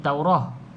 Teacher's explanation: kalau kita berhenti bunyi dia macam ha kalau kita sambung bunyi dia bunyi asalah bunyi huruf ta macam